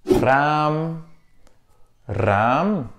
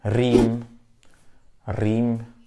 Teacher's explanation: ce premier r roulé fait penser un peu au R r espagnol